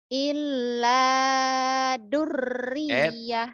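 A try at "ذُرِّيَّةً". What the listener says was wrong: Bukan dur, zur, zal.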